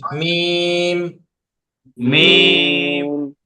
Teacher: দুই ঠোঁটের শুকনা জায়গা হইতে উচ্চারিত হয় মিম। স্বাভাবিকভাবে মিম।